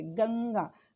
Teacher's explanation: अनुस्वार वाले यानी नासिक्य, जो नाक और मुंह दोनों से हवा बाहर निकलती